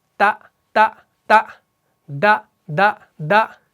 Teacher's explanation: تا کے وقت بھی زبان ایگزیکٹلی سیم جگہ پہ لگتی ہے اور دال کے وقت بھی وہیں پر لگ رہی ہے، بس فرق یہ ہے آواز الگ الگ ہے.